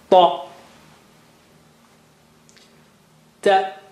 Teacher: No dot means no blow. Okay, there is no blow of air, or no stronger flow of air. So this is without dot.